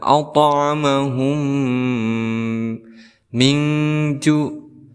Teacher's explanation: mim sukun bertemu dengan mim, maka kita hukumi sebagai idgham mimi. Cara membacanya yaitu kita tasdidkan kemudian kita dengungkan.